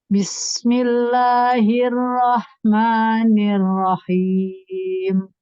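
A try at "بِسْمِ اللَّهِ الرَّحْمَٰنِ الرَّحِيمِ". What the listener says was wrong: Bismi, minya kasrohnya diturunkan rahangnya. Bismi. Kasih power pada tasydid toronya. Bismillahirrahmanirrahim.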